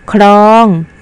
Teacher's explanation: ครูจะเปล่งเสียงพร้อมกันทั้งพยัญชนะกอไก่นะเทียนชนะรอลิงนะคะทำที่2ครุยอ่านว่าครุยคำนี้ก็มีพยัญชนะต้นสองตัวค่ะคือพยัญชนะขอใครและพยัญชนะรอลิงเวลาเปล่งเสียงจะต้องเปลี่ยนเสียงพร้อมกันนะคะคำที่3คลองอ่านว่าคลองคำนี้มีพยัญชนะต้นสองตัวคือพยัญชนะขอควายและพยัญชนะดอลิง เวลาอ่านจะต้องอ่านออกเสียงพร้อมกันค่ะทั้งคอควายและลอลิง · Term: คำควบกล้ำ